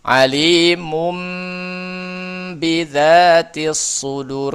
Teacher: bunyi huruf nun sukun atau tanwin diganti dengan bunyi mim sukun saat bertemu dengan huruf ba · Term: iqlab